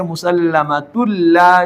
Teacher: اب یہاں پر ادغام اس طریقے سے کریں گے کہ تا کے اوپر دو پیش کو لام کے ساتھ اس طریقے سے ملائیں گے کہ دونوں کو مشدد پڑھا جائے گا · اب تنوین جب آئے تو اس کو ناک میں لے جا کر غنہ کے ساتھ پڑھنا ضروری تھا، لیکن ہر تنوین کو غنہ کے ساتھ پڑھنا ضروری نہیں ہے۔ جس تنوین کے بعد لام آئے اس تنوین میں غنہ نہیں ہوگا، ادغام ہوگا